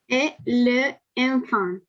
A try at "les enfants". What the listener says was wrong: les enfants. On fait la liaison. Legătura între cuvinte. Facem legătura les enfants.